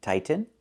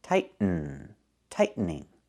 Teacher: You can say tighten and make a real T, tighten, or you can make a stop T, tight, and then go to the N, tighten, tightening.